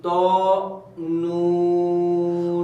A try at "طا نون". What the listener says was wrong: اور ہونٹوں کو اس طرح گول نہیں کرنا، ہونٹ ہلکی سے صرف کھولنے ہیں، طا نون،